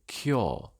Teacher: Also, cure merges with north and force, giving cure.